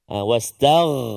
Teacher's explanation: Gain di permulaan rongga kerongkongan kita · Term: ghain yang sukun